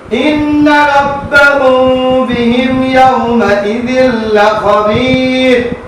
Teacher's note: তাসদীদুল নূন ওয়াজিব গুনাহ একালি পরিমাণ গুনগুন করে পড়বেন এবং মুখটা ফাঁকা রেখে করবেন গুনাহটা রব্বাহুম মিম সাকিনের বামে বা এটাকে ইকফাই সবাই বলে দুই